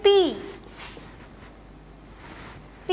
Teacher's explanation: जब दोनों लिप्स जो है आपस में मूवमेंट करते हैं तो जो ये साउंड क्रिएट करते हैं उस साउंड को हम कहते हैं बाइलेबियल साउंड। बाइलेबियल साउंड जो है ये तब प्रोड्यूस होती हैं जब अपर लिप और लोअर लिप दोनों मिलकर जो है मूवमेंट करते हैं।